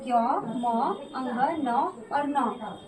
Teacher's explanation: इन सब का जो स्थान उच्चारण स्थान है वो है नासिका स्थान। कौन सा है, नासिका स्थान, यानी कि नाक से हम बोलते हैं, किससे बोलते हैं, नाक से। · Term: अनुनासिक वर्ण